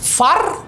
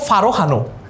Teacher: উচ্চারণ হচ্ছে ফার, দেখেছো থেমেছে কিন্তু, ফার, ফারও বলি নাই কিন্তু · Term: হসন্ত